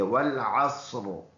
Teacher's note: را پر پڑھیں گے منہ بھر کر، کیونکہ تھرڈ ورڈ پر زبر ہے